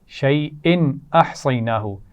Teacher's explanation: احصیناہ اور اس سے پہلے حمزہ کے نیچے تنوین ہے. شیئن احصیناہ یہاں پر ہم نے غنہ نہیں کیا کیونکہ حروف حلقی میں سے حمزہ آ گیا تھا